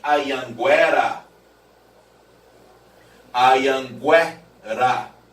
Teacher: Agora, se houvesse o trema, aí o som do U aparecia como semivogal